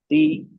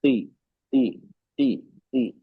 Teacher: ती में दो चीज हो रही है ना, एक मखरज टच हो रहा है और दूसरा क्या हो रहा है, जबान का बीच का हिस्सा उठ रहा है ऊपर। ती, ती, तब साफ आवाज निकलेगी।